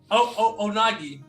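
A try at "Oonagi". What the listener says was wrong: Not O. Ooh. The two O's is ooh. Ooh. Nagi.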